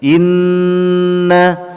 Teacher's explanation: pertama Hamzah berharakat kasrah Iya ih kemudian Nun bertasydid punahnya guna ditahan dua harokat dengan dengung di dalam khaisyum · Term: gunnah